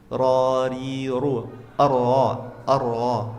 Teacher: Nah, di buku ini disebutkan ra enggak boleh bergetar lebih dari dua kali.